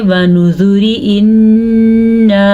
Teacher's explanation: پھر آپ را باریک پڑھیں گے کیونکہ را کے نیچے زیر ہی پڑی جائے گی